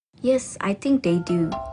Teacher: She uses a fall-rising tone appropriately to indicate that she doesn't really know or is unsure.